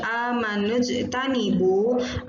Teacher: Jimnya dia dibaca memantul. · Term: qalqalah sugro